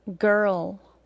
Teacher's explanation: The schwa sound is an unstressed vowel sound in English. When schwa comes before an R, there becomes almost no vowel sound at all, and we only say and hear an R sound that takes a little longer than it would if it weren't after a vowel. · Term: schwa plus R sound